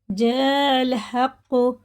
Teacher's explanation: یہ مد متصل ہے، اس کے بعد حمزہ آ رہا، 4 الف کے برابر اسے کھینچ کے پڑھنا ہوتا ہے